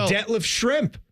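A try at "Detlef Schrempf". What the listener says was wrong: Yeah, there's an F on the end. But sound like Detlef Shrimp a lot of time, the way people said it.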